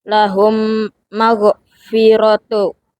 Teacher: mim mati dilebur dengan guna karena bertemu huruf mim. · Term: idgham mimi